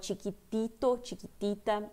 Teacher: cuidado que o T não tem esse T forte no espanhol